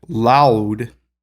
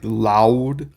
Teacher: you can hear that it's La U it's sort of gliding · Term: diphthong